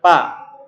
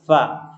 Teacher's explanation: Ingat fa harus terdengar mahmusnya fa ya, enggak boleh antum bilang pa. Di sini sering terjadi kesalahan bilang pa, harus bacanya fa ya.